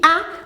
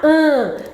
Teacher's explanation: além do ar que sai pela boca, também passa pelo nariz. Então ele fica nasal